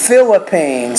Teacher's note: that PH is actually an F, and you have to pronounce that with a little bit more air coming through with your lips and your teeth coming together.